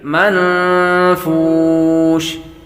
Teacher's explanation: نون ساکن کے بعد فا حروف اخفا میں سے آ رہا ہے، اخفا کا قاعدہ لگے گا